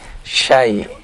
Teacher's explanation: Huruf syinnya Pak difathahkan ya. Jangan dimiringkan ya. Bukan syi tapi syai ya.